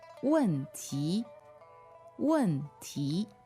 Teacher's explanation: So that's W-E-N, fourth tone, and T-I, second tone, right?